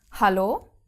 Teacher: the german h is aspirated at the beginning of a word like in hollow yeah you actually have the the breathing out